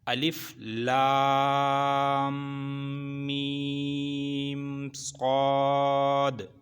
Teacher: تو یہ تینوں الفاظ لمبے کیے جائیں گے، اور یہ جو بیچ میں میم ہے اس کے اوپر وہی 3 دانتوں والی جو شکل ہے، یہ اس کا یہ ظاہر کرتی ہے کہ یہ لام اور میم جو ہے نا یہ اکٹھے ملیں گے اور یہ غنہ ہوگا، یہ غنے کے ساتھ ملیں گے۔ · یہ تینوں لفظ لمبے ہوں گے، لام اور میم ملے گا، صاد اکیلا ہے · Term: لیٹی مد